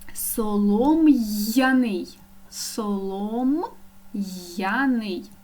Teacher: я є ю позначають два звуки і ми чітко чуємо й